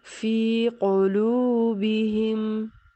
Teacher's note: واو ساکن سے پہلے لام پر پیش ہے تو اس کو واو مدہ کہیں گے اور ایک الف کی مقدار میں کھینچ کر پڑھیں گے